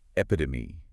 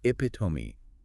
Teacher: With the stress on the pit. Stress on the second syllable.